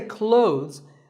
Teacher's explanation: silent here well first of all this word is not cloths when we say clothes the th in the middle can often be silent